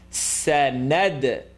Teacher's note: Tip of the tongue behind the top 2 teeth.